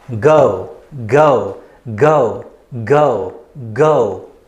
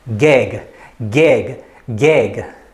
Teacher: we use the back of our tongue to close the airway so that our sound is made from the back of our mouth